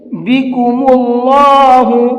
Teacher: اللہ کے کلام سے پہلے پیش ہوتا ہے تو اس اللہ کے کلام کو بھی پر کر کے پڑھتے ہیں، منہ بھر کے پڑھتے ہیں